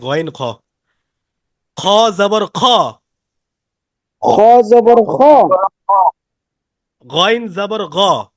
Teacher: খ আর গয়েন দুটোটা একই জায়গা থেকে উচ্চারিত হয়, হলক বা কণ্ঠনালীর শেষ থেকে